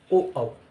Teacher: पश्च स्वर जीभ का पिछला हिस्सा काम करे